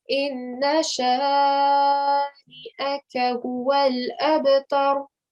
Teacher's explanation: Remember, I'm giving sort of a thick sound here because ra, if it has a fatha or dhamma on top, you end up giving it a bit of a thick sound